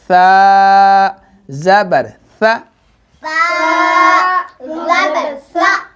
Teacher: سا زبر سا, سا زبر سا زبان کو دانتوں کے اندرونی آپ نے لگانا ہے. سا, سا کو 2 حرکات کے برابر کھینچنا ہے